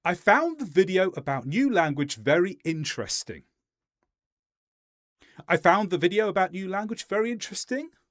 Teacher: One of them went down on interesting and one of them went up on interesting. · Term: Upspeak